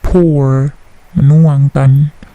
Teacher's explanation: Bunyi P plosifnya tidak terlalu besar